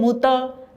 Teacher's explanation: त बोलते हुए जो जीभ दांत के पीछे लगी वहां से हटाएं और हवा निकालें